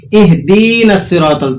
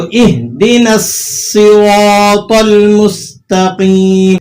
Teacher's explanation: اہدی کے اندر جو دال ہے اسے آپ نے کھینچنا نہیں ہے